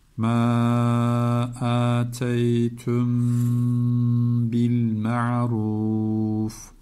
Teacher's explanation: Sakin mimden sonra B gelince dudak ihfası.